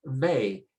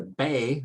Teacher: The sound is sometimes pronounced with a V sound, where you bite your teeth on your lower lip, your upper teeth on your lower lip, and you get a V. Or you put the 2 lips together and then you get a B. When Spanish speakers are pronouncing words, oftentimes the 2 sounds sort of blend together and it's sort of a BV sound.